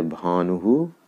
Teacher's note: ई हो तो उसका उच्चारण ही जैसा हो जाता है, जैसे रानिः। उ हो तो उसका उच्चारण हु जैसा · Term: विसर्ग